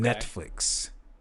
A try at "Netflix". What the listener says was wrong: Did you say Netflixed? You just said you put a T. You said Netflix. Netflix.